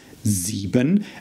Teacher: again the Z sound of the S at the beginning and the E sound of our IE that we have met before.